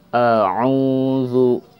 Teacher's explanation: hamzah merupakan huruf sifatnya jahar, jelas, yang keluarnya dari sadar atau makhrajnya keluar dari sadar, dada